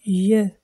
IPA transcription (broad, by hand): j